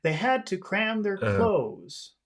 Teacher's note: we'll start the phrase High because phrases normally start high and go low it's just that we're adding a little extra high at the end